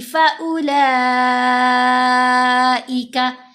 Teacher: लाम के ऊपर मद मुत्तसिल है, 5 हरकात की मिकदार लंबा किया